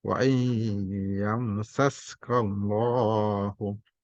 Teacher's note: Allah dibaca tebal, takhim tebal karena berbaris sebelumnya fathah, ka, kallah, atau dhamma u, maka dibaca tebal.